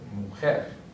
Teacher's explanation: It's not an N or an S, so therefore it's going to be a palabra aguda, and the stress is going to be on the last syllable